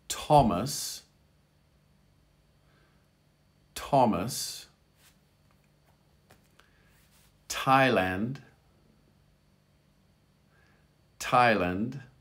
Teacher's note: in english th can also be a t sound in these particular words